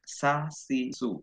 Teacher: Nah, kalau sa itu antara langit-langit dan tengah lidah.